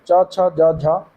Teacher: च वर्ग, च छ ज झ, ये आ जाते हैं तालव्य के अंतर्गत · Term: तालव्य व्यंजन